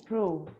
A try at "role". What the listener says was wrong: Whole. So you have to roll your tongue. Roll. I would suggest thinking like the Mineiros do. The Mineiros can pronounce this very well because they say portão, porteira, roll. Not whole. Whole.